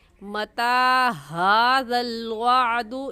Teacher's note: ऐसे कहेंगे वयक़ूलूना मता, ता के ऊपर खड़ी ज़बर है और खड़ी ज़बर को एक अलिफ के बराबर खींच कर पढ़ते हैं